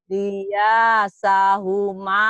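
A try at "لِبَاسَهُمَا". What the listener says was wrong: Oh, jangan lia. Ini liba, Bu. Titiknya satu. Liba, liba.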